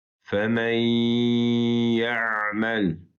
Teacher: burada nun harfi okunmur ve femen kelimesini ya'mel kelimesine birleştiririk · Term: gunneli idgama